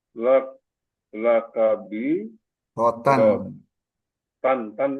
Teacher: Wa lakabirotannya dibaca jelas izhar, tidak dengung, tidak ikhfa.